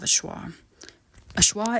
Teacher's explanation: awwa is a central mid vowel which means you pronounce it in the middle of your mouth